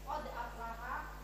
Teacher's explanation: dalnya itu kita tekan dulu ada pantulan